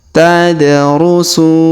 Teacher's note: huruf da berharakat sukun maka kita pantulkan atau kita qalqalahkan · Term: qalqalahkannya